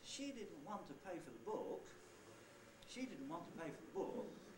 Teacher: There are no syllables in front of the first accented syllable, so I don't have a prehead. She didn't want to pay for the is the head, and book is the nucleus. · the pitch contour on the nucleus is different from all the others. It goes down and then comes up again.